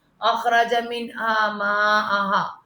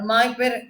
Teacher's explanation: من کوئی یہاں پہ ہے تم، یہاں نون کے ساتھ کیا ہے حروف حلقی آ رہا ہے، اظہار غنہ ہوگا، منہا غنہ نہیں من کہتے ہیں سمپل